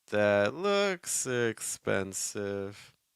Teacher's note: then we stress looks so then we went higher in pitch and then we fell